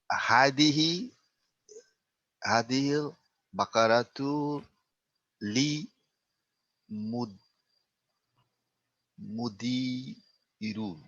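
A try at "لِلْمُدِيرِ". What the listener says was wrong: Lil mudiri. La, no, lil mudiri. Why is it not ru and it's ri? Why is there a kasra at the end of mudir?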